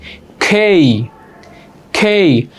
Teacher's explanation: যেই যেই খেই এতদিন যাকে আমরা খেই পড়তাম সরি কে পড়তাম আজকে থেকে উচ্চারণ হবে খেই ক না করে খ